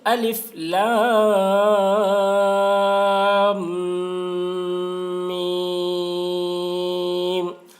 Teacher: الف لام میم، اور دیکھیے میم میں غنہ کر رہے ہیں، کیونکہ میم مشدد ہے، میم کے اوپر تشدید ہے، اس لیے میم کی آواز کو ناک میں لے جا کر ایک الف کی مقدار کھینچیں گے